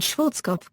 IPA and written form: ˈʃwɔrtskɒf (Schwarzkopf)